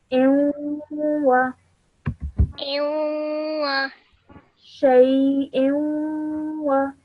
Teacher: a 2-second nasal sound is put in between the hamza and the waw.